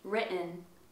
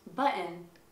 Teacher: sometimes if there is a double T, the T might actually be glottalized in American